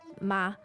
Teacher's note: a slightly higher tone of pitch for the question